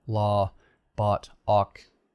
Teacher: in many varieties of american english the o becomes sort of an ah